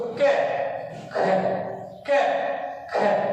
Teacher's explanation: अब देखो हम जब इनका उच्चारण करेंगे, एक तो मैंने बोला क और एक बोला मैंने ख, तो क ख क ख, कैसे ज्यादा हवा ख में निकल रही है, तो क का महाप्राण वर्ण ख है।